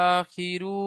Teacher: আলিফ মাদ্দা আলিফ মাদ্দাকে এক আলিফ পরিমাণ টান দিয়ে পড়তে হয়